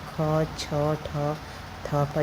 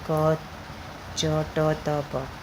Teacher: जैसे अल्पप्राण होता है क, च, ट, त, प। महाप्राण होते हैं ख, छ, ठ, थ, फ जिसमें बोलने में समय लग रहा है। अल्पप्राण तुरंत हम बोल सकते हैं।